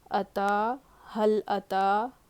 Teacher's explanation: تا پہ کھڑا زبر ہے، برابر ہے حروف مدہ کے، ایک الف کے برابر کھینچنا ہے